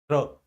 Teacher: र, रा को उच्चारित करने में क्या होगा, जिह्वा मसूड़ों को छुएगी। र, महसूस कंपन तो होगा लेकिन मसूड़ों को छूने की चेष्टा करेगी, र, है ना। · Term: वतस्य